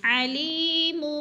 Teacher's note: یا مدہ کو ایک الف کے برابر کھینچ کر پڑھنا ہے